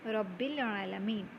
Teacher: In the word alamin, there is an hamzatul wasla, that is the connecting hamza, which is dropped because the alamin word is joined with the word preceding it, that is alamin is joined with rabbil alamin.